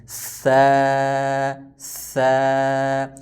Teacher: زبان کا اوپر والا حصہ جو ہے اوپر والے دانتوں کے نیچے نیچے لگائیں گے تو سا ادا ہوگا